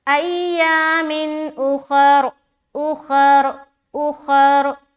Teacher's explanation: اور یہاں پر را کے اوپر جب اسٹاپ کریں گے تو را موٹا ہوگا، کیونکہ اسٹاپ کرنے کی صورت میں را کے اوپر ہم سکون لگائیں گے زبر ہٹا کر، تو یہ رائے ساکینہ بن گیا، اور رائے ساکینہ سے پہلے آپ کو زبر ہے تو را کو موٹا رکھیں گے۔